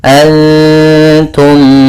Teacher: Kemudian antum ada bacaan ikhfa hakiki, yaitu bacaan samar antara bacaan menyamarkan suara nun kepada huruf ta